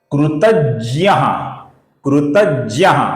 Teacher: इसका उच्चारण हम हिंदी में जी वाई ए ज्ञ ऐसा करते हैं। संस्कृत में इसका उच्चारण ज और य एक होने की वजह से ज्य ज्य ऐसा इसका उच्चारण होता है